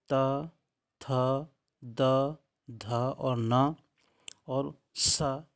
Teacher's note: त वर्ग के पांच अक्षर त थ द ध और न और स यह दंत से बोले जाते हैं